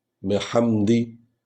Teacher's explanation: بحمدی، بحمدی بھی نہیں پڑھنا کیونکہ چھوٹی یا بن جائے گی، بحمدی، اور ہا کو جو ہے ہلکا خا پڑھنا ہے، پورا خے بھی نہ بن جائے اور ہلکا خا، بحمدی۔